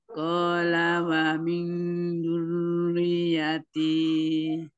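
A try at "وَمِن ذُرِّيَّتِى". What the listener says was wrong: itu masih belum zalnya masih terdengar seperti dal. Qala wa min dzurriyyati. Zurri ri ya nyetekan zurriyati.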